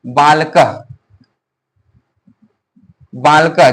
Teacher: बालकः ये जो है वाक लोक को विसर्ग, ये जो है ये जो दिए हुए इसको बोलते हैं विसर्ग, जिसका उच्चारण हो होता है। जब भी हम लोग उच्चारण करेंगे तो बालकः लास्ट में हो का उच्चारण आना चाहिए